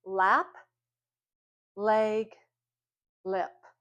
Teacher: We make that sound by our mouth being open, the tip of our tongues curled up behind our top teeth, and it's a voiced sound.